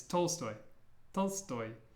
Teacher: in Russian the stress is at the end